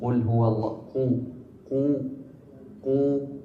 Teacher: نتم فيها الضم بإتمام الشفتين بضم الشفتين إلى الأمام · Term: ضمة